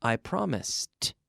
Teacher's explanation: so it has that t sound in the past but it's not an extra syllable